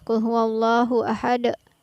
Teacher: tidak menerapkan hukum bacaan qalqalah di setiap ujung ayatnya. Jadi yang benar seperti tadi, Qul huwallahu ahad, ada pantulan di setiap ujung ayat.